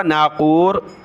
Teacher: نون پر غنہ ہوا